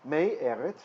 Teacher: So instead of me, Eretz, we get a compensatory lengthening of the chirik, the short vowel, to a long vowel tseri